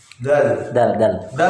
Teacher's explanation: Dal makhrajnya di ujung lidah menempel pada ujung gigi seri atas. sifatnya yang pertama dia adalah jahar. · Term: qalqalah